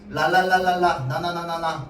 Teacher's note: 니은, 리을 둘 다 무슨 소리인데? 랄랄랄랄라, 나나나나나 둘 다 잇몸 소리야.